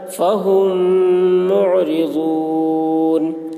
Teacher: میم ساکن کے بعد میم آ رہا ہے اس لیے میم کو میم سے ملا کر غنہ کے ساتھ پڑھیں گے، اس کو ادغام شفوی کہتے ہیں۔